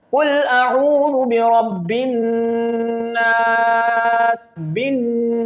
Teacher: And when I recite this word, I feel the sound is going in my nose. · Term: ghunnah